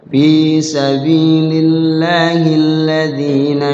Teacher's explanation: zi-nya adalah matobi'i, jangan panjang-panjang, matobi'i dua ketukan atau semisal diayun saja.